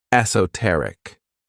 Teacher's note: this word has four syllables and the stress is on that third syllable